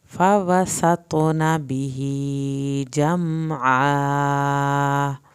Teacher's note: میم کو نہیں ہلانا، عین کو حلق سے ادا کرنا ہے، الف اٹیچ ہے اس کو پورا کھینچ کے پڑھنا ہے